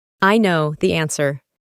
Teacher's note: En la pronunciación de este verbo, la primera letra no se pronuncia